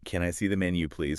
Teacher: Make sure you use a rising intonation at the end. It should sound like a question. · Kind of going up at the end. Exactly. It makes it sound more polite and natural.